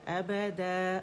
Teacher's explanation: مد اول میں مد عوض میں بدل جائے گی تنوین، ٹھیک ہے. الف مدہ ان 2 کاؤنٹس ہم اسے کھینچیں گے. ابدا، اور آواز اوپر جائے گی، د کر کے امالا کر کے نہیں پڑھیں گے.